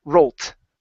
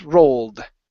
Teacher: It's a D sound when you have voiced sounds like an L, like roll. That's a voiced sound, and so it's rolled with a D and not rolt. It's rolled.